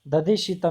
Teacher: शकार का भी तालु स्थान है और इवर्ण का भी तालु स्थान है